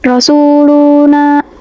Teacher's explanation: Nah, Rasuluna ini tajwidnya itu matobi'i. Dia itu dibaca panjang 2 harokat pada huruf na.